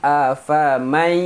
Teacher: nun mati masukkan ke dalam ya, dengung afamai jangan baca afaman yati.